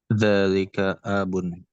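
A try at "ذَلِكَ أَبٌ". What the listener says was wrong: A-nya tidak panjang.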